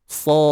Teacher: So, 6 harakat pada sa ni. Sad. Kita tutup dia dengan adanya qalqalah. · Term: qalqalah kubra